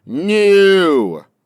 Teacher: New should have a longer oo. Extend the sound by a second.